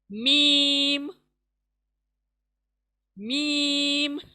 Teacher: दोनों होंठ का सूखा हिस्सा, यानी जब दोनों होंठ मिलेंगे सूखे हिस्से से अदा होगा मीम, यानी होंठ थोड़ा अंदर को जाएंगे, मीम, मीम अंदर को जाएंगे होंठ और सूखे हिस्से से अदा होगा मीम।